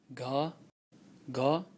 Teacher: in Nepalese, they have a vocalized aspirated velar plosive.